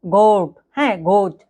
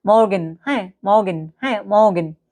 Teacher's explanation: গলায় ঘষা দিয়ে উচ্চারিত হয়